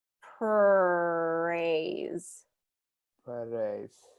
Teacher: the American R the tongue comes down and it's more of a smooth R